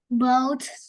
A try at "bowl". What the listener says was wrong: Bowl. Bowl, not boat. Bowl. Bowl.